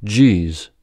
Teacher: You begin with the stop d, and then release the air slowly to become a j.